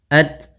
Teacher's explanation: At, ta ada sifat hamasnya. Ro, sifat hamas yaitu mengalirnya nafas kita ketika melafalkan tak sukun